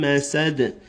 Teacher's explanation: the last word you'll have a qalqala or an echo with the dal.